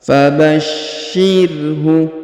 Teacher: Perhatikan huruf sya ditahan dan ditekan ya, karena terdapat tanda tasdid